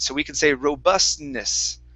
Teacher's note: So when you guys see a word like that has an N, okay, so it's like a T and an N, you don't really have to say that T sound. Okay, it's hidden inside the N.